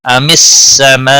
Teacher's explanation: ام السماء مد متصل ہے، 5 الف کے برابر کھینچ کر پڑھیں گے